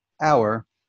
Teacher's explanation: we don't really pronounce the H in the word hour. We don't say in a hour, like the same way we use the H sound in horse.